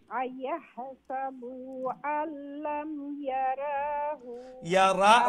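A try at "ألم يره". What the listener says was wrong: রা লম্বা নাই হু খালি লম্বা ইয়ারাহু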